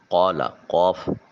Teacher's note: حلق کے کوے کے ساتھ جب زبان کی جڑ ملے تو قوف ادا ہوتا ہے۔ الف خالی از حرکت ما قبل حرف قاف کے اوپر زبر ہے، الف مدہ ہوگا، ایک الف کے قائم مقام اس کو لمبا کریں گے۔